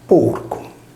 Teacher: con metatesi linguistica, vale a dire con spostamento della consonante /r/ liquida all’interno di parola